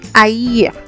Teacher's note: you have to pronounce the two vowels separately, not together as diphthongs